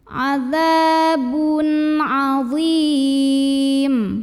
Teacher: Lalu berikutnya di sini ada izhar halqi karena ada tanwin dhammah ketemu dengan huruf halqi atau huruf tenggorokan yaitu ain. Maka tanwinnya dibaca n-nya jelas